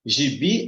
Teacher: Gibi, a sílaba mais forte é o bi.